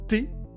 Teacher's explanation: Si je prononce un T, je place ma langue sur la petite bosse charnue juste derrière mes dents. T est une consonne alvéolaire.